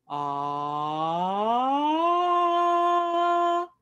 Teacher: we're going to glide up on ah